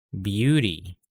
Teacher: so after the b i'm adding a y sound